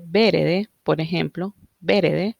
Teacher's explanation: si se fijan, la segunda E casi no se pronuncia, entonces se pierde y evoluciona a verde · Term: síncopa postónica